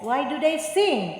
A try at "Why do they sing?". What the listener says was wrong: Sing, bukan sing itu turun, mesti